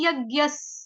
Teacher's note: विसर्ग का उच्चारण होगा आधे स से। क्यों? क्योंकि आगे आने वाला शब्द जो है वो भी आधे स से शुरू हो रहा है, यानी कि स्वधाह, स से शुरू हो रहा है ना।